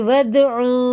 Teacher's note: دیکھیں یہ الف پڑھا نہیں جائے گا، دال میں قلقلہ